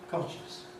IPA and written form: ˡkɒnʃəns (conscience)